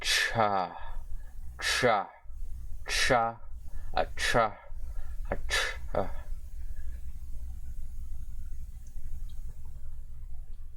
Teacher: Aspirated affricate, or aspirated sibilant affricate consonant